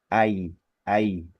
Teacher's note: dua vokal ini kita baca dua-duanya secara sempurna dan berurutan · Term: bacaan layin